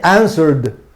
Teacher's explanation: Una consonante sonora y no termina en D, por lo tanto se pronuncia como D